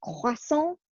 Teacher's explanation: You gotta get that weird R sound in the back